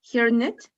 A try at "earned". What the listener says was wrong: Or the E is not going to be like h, it's only going to be earned. Earned.